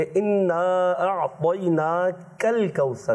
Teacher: सूरह कौसर में थोड़ी सी गलतियाँ हो गई हैं कि इन्ना अअतैनाकल कौसर, काफ को बारीक रखना है, मोटा नहीं करना